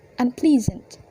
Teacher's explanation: before and after the prefix un attached, the stress still remains on the ple